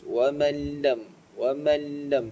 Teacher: Man lam, di situ nun bertemu dengan lam, yang mana hukum tajwidnya adalah idgham bila gunnah. Kita tak perlu dengungkan